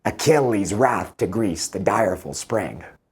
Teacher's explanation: Immediately you can hear the ‘Heroic Couplets.’ These are the rhymed lines of iambic pentameter. So each line has five beats, two syllables each beat, and the stress is on the second syllable in the beat.